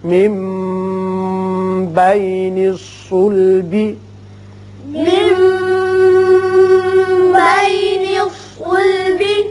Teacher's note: نون ساکن کے بعد جب با آ جائے تو وہاں اقلاب ہوتا ہے، میم کی سی آواز نکلتی ہے